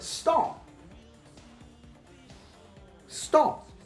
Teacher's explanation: I am not releasing the stop because it is at the end of word.